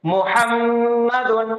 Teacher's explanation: بیچ میں میم مشدد غنہ کے ساتھ ، اور آخر میں دال دو پیش دن، تنوین کے پیچھے